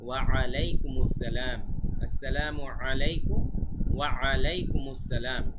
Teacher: এই যে গলার ভেতর থেকে যে বলছি ওয়া আ, এটাই হচ্ছে আইন।